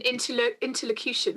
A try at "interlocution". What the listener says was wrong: You said that with your lips a bit close. It's a very posh word. Interlocution.